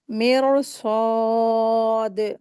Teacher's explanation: دال کے اوپر وف کی صورت میں ہم اس کو قلقلہ کر کے پڑھیں گے